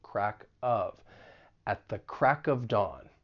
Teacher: At the. And then we can link the final consonant sound in crack with the vowel sound in of. Crack of.